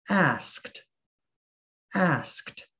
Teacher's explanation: The past tense of ask is asked, asked, with a t sound at the end.